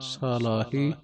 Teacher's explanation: ਸ ਦਾ ਕੰਨਾ ਪੂਰਾ ਬੋਲਣਾ ਸਲਾਹੀ ਨਹੀਂ ਕਹਿਣਾ ਸਾਲਾਹੀ ਜਜੇ ਤੇ ਅਤਕ ਲਾ ਕੇ ਕਸ ਕੇ